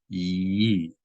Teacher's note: But if you see a hirik together with the letter yud directly underneath it, then the yud is making a y sound. And after you make the y sound, as in yes, then you produce the e sound of the vowel, e. So this would not be e, it would be ye.